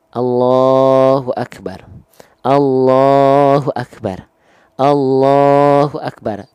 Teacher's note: L-nya jalan terus tanpa mantul tapi tanpa putus. Tuh L-nya tetap jalan sedikit.